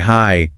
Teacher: you can stretch it out like hi to show you're really happy to see someone